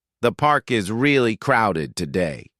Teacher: The falling tone makes it clear this is a comment, not a question.